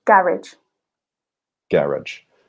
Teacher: So very much with the Betonung on the very beginning of the word in British English.